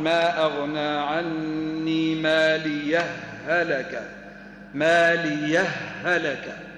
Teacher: الادغام من قبيل المتماثل حرف وبعده نفس الحرف هو متماثل يعني هاء وبعدها هاء